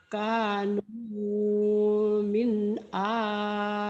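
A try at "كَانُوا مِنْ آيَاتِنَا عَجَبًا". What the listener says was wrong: No-nya jangan kepanjangan, cuman satu alif atau bi dua ketukan. Kanu min ayatina ajaba. Cek no kayak gitu.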